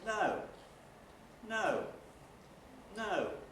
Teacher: starts high in the speaker's pitch range falls to low by the end of that syllable and then if there are any more syllables levels out stays · We start quite high in the speaker's pitch range and fall to quite low. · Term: high fall nuclear tone, high-fall nuclear tone